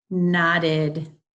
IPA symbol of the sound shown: id